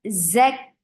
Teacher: there is buzzing sound in za attached with kaf